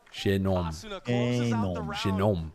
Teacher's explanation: The stress is in the nom.